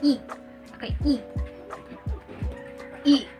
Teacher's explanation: It is a closed front vowel sound.